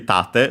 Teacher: so accent on the first syllable